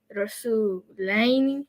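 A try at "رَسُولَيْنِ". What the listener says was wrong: Good. And that's twice.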